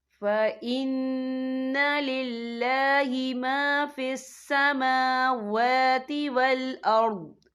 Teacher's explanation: فعل مطلق کی علامت ہے، تو یہاں پہ ٹھہرنا بہتر ہے۔ وقف کی صورت میں ضاد ساکن ہو جائے گا